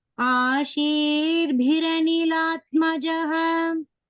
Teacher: The bha is Mahapranah there. And here there is a dvitva.